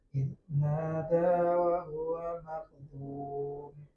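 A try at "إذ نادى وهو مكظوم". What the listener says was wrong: Nah, masih mirip ujungnya. Idnada wa huwa makdzum ya. Jadi jelas, tegas u dan tegas i.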